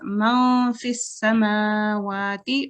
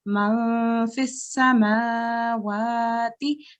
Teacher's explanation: So we give it 2 seconds and we make it into a hidden noon.